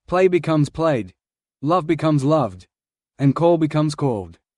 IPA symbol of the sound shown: d